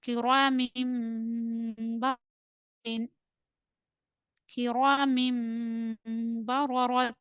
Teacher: There is a clap because after tanween the next letter is ba. This ra will be read with heavy sound because of fatha. The next ra also will be bold because of fatha.